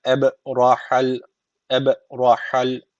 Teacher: ra harfi cezimli öncesindeki harf üstten bağlandığı için ra harfi kalın okunuyor